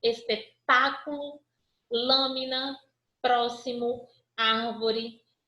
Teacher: Palavras em que a sílaba tônica é a antepenúltima. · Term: Proparoxítonas